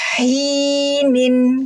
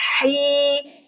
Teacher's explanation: Kasroh bunyinya i, ya sukun bunyinya i, double i. Hi, dihukumi mad tabi'i.